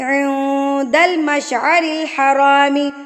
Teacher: نون ساکن کے بعد دال آ گیا تو دال کیا ہے، حروف اقفا، تو ہم نے یہاں پر نون ساکن کی آواز کو ناک میں چھپا لینا ہے۔ عند المشعر الحرام، صاد، اس کا مطلب اس کو آپ نے ملاتے جانا ہے، پڑھتے جانا ہے، رکنا نہیں ہے۔